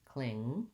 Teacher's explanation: Make sure you end on the ng sound. Don't let your tongue drop to make a g.